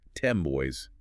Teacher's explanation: A nasal sound made with closed lips is an M. So because of the gravitational pull of the bilabial B, the alveolar N morphs. Structurally, 10 boys is universally pronounced by native speakers as 10 boys with an M.